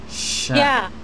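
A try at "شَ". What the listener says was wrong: Bukan sia. Nah, sh, nyebar.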